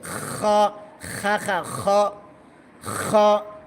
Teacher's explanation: আবার বল হা শক্ত করে বল। হা খ গলা গলা খর করার মত উচ্চারণ হবে